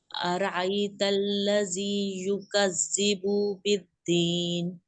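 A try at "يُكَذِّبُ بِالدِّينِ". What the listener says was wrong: زال کو سختی سے نہیں پڑھنا، یکذب بالدین، یکذب بالدین،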